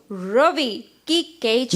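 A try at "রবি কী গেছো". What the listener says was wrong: नहीं रवि नहीं होता है, रोबी की गेछो।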